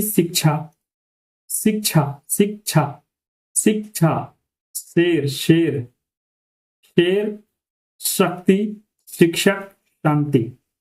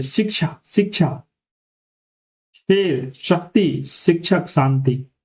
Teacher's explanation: जीभ जो है ऊपर उठकर बोल रही है और जो ऊपर मसूड़े हैं ऊपर वाले दांत है वहां पर थोड़ी सी जीभ जो है आपकी वो टकराने की कोशिश कर रही है